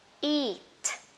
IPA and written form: i:t (eat)